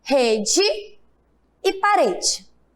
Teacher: quando eu falo rede, o E tem som de quê? De I. E parede, o E também tem som de I. · a letra E, quando o sonzinho dela for fraquinho, ela terá o som da letra I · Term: o E tem som de I, átona